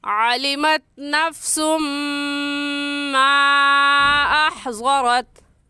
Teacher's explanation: مخارج کو نکال کر پڑھیں گے، عین کی جگہ حمزہ نہیں پڑھیں گے۔